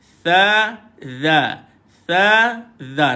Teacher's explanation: Di satu dha, hujung lidah dikeluarkan macam kita baca tha tadi, hujung lidah dikeluarkan bunyi dia tha, bunyi dia dha.